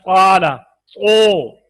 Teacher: होंठों को गोल करके अलिफ को वाव की तरफ होंठ बंद जो गोल करके नंद अदा करें कि वो इस अलिफ वाव की तरफ हो जाए।